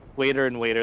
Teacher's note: We do something called flapping. For us, T's and D's are pronounced the same way between vowels.